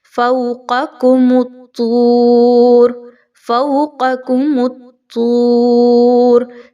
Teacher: تو یہاں پہ قاف اور کاف دونوں ایک ساتھ آ گئی, تو آپ کے مخارج بڑے کلیئر ہونے چاہیے. پہلے والی قاف کو, ڈاٹس والی کو آپ نے خوب موٹا کرنا ہے اور دوسری کاف کو باریک پڑھنا ہے